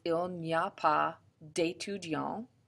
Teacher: you would have to do a D apostrophe because of the slide together, which is called an elision